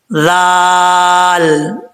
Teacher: ذال زبان کا سیرا اوپر والے دانتوں کے کنارے سے لگے تو ذال پڑھا جاتا ہے بغیر سیٹی کے